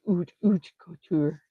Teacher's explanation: Sorry, there's no H pronounced